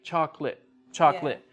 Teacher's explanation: we don't use all of the syllables with chocolate